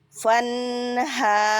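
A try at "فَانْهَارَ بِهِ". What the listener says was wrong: Ro, bukan ra. Fanharo.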